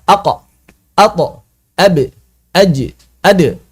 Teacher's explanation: yang lima ini menghasilkan pantulan suara pantulan yang bersuara yang dikenal dengan istilah qalqalah